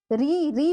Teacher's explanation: जीहवा और मसूड़ा सब टच हो रहा है। स्पर्श हो रहा है। यानी कि निर्बाध रूप से वायु मुख से नहीं निकल रही है। तो इसीलिए कुछ लोगों ने कहा कि भाई देखिए यह पूरे तरीके से जो है कि स्वर का रूप नहीं है।